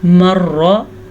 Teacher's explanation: را کے اوپر شد ہے تو زبان تھوڑی سی لڑکھڑا کے یہ لفظ ادا ہوتا ہے، شد والا را، مر را۔